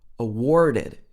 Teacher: it would have this r-colored er sound · If this was in the American accent, it would be awarded. It would have this R-colored sound.